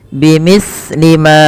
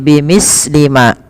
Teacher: hati-hati di dalam melafalkan huruf sa, jangan sampai sa ini memantul ya teman-teman, atau dia membacanya dengan huruf sin. Contoh memantul bimislima, bimislima itu memantul, atau dia membaca dengan sin bimislima.